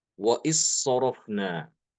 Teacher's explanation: Jadi seharusnya itu il sorofna wa il sorofna. Maka bacaan Imam Hisham dia dengan mengidghamkan dal ini ke dalam huruf sod.